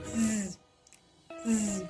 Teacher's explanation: The place of articulation is palato-alveolar. This phoneme sounds z, z.